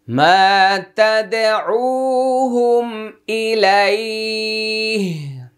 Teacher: ওয়াকফ করার কারণে এক আলিফ টান হবে